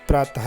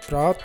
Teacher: इन दो बिंदियों का जो उपयोग है वो ह से ही होगा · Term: विसर्ग